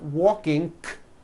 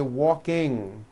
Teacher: Ing comes out of your nose. It's a combination of an N and a G, and it is found at the ends of words like ring and sing. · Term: NG ending